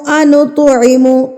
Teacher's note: تو کے اوپر ساکن ہے تو پہ ہم نے جو ہے قلقلہ کرنا ہے، یعنی کہ اس کو ہلا کے پڑھنا ہے۔ نط نہیں کرنا، نط پہ آواز کو روکنا نہیں ہے۔